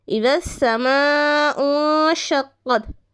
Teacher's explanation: یعنی نون ساکن کے بعد شین ہو تو ہمیں وہاں پر غنہ کر کر پڑھنا ہے